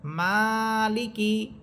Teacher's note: এখানে প্রথম শব্দটা দেখেন, মিম খারা সবর মা, লামসের লি, মালি, কাফসের কি, মালিকি। এখানে মিম হরফে আপনাকে টেনে পড়তে হবে, এখানে লাম বা কাফ হরফে কোনো টান হবে না। এখানে যে টানটা হবে সেটা হবে মিম হরফের উপর।